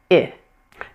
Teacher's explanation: Take a look at my face and how relaxed it is and how low pitch that sound is. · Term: short I